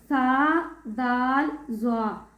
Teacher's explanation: زبان کا سیرہ اور اوپر کے دانتوں کے اندرونی کنارے سے